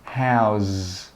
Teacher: that last sound should be like a z sound. Your throat should vibrate.